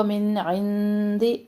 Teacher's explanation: من اظہار کریں گے من نون ساکن کے بعد عین. عند اللہ نون ساکن کے بعد دال تو یہاں پہ باریک اخفا کر رہے ہیں.